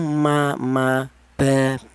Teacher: huruf ba dan huruf mim ini dihasilkan dari kedua bibir yang rapat